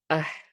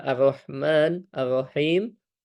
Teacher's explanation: ha maka dia ada seperti hembusan nafas yang mengalir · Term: H tipis